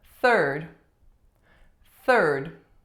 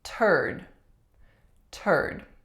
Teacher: if we don't put that voiceless TH in, we will end up with a not so polite word, turd. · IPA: /θ/